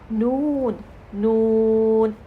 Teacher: अब जब हम नून पढ़ रहे हैं तो ये देखें हमारी उसके साथ सांस बाहर आ रही है। अब नून का कुछ हिस्सा नाक में भी चला गया है · सनाया, रुबाई और अनियाब के मसूड़ से लगेंगे तो हम अदा करेंगे नून नून। अब जब हम नून पढ़ रहे हैं तो ये देखें हमारी उसके साथ सांस बाहर आ रही है।